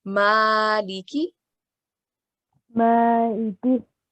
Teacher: liki, we read it quickly because it's got kasra, which is a short stretch, and we stretch it for up to 1 second.